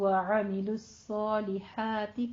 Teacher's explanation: عین کو وسط حلق سے ادا کرنا ہے